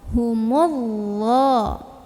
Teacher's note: Cara membunyikannya, alif lam ini tidak perlu dibaca, dari mim langsung masukkan ke dha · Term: alif lam syamsiyah